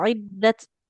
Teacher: harus ada e percikan nafasnya karena dia punya sifat hams